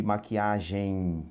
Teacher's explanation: Nós temos um ditongo ao final da palavra, tá? O EM no final, esse M tem um som de I, tá? Quando o M, o E é seguido de M, em geral você vai ouvir o som do I, maquiagem.